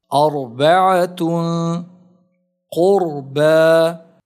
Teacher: The second condition is when the Ra is Saakin and the letter before it has a Fatha or a Dammah. Although the Ra has Sukoon, it is still pronounced heavily because of the vowel on the letter before it.